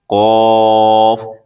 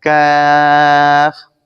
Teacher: قاف زبان کی جڑ تالو کے نرم حصے سے ادا ہوتا ہے، اور کاف زبان کی جڑ تالو کے سخت حصے سے ادا ہوتا ہے